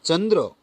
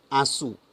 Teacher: ચંદ્ર છે તો એનો ન બન્યો અનુસ્વારનો, જ્યારે આંસુ છે આમસુ એમ બનતું નથી. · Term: તીવ્ર અનુસ્વાર